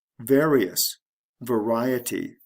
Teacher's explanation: The stress shifts from the first syllable to the second syllable.